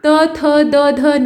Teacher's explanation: तो देखिए इसे त थ द ध न, अगर आप पोपले हो तो आपको बोलने में दिक्कत होगी, ठीक है, मतलब ये दंत्य हैं। दांत के सपोर्ट के बिना ये ढंग से उच्चारित नहीं हो सकते हैं।